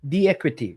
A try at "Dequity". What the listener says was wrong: Dequity, yeah, Dequity. Dequity. D in front of equity.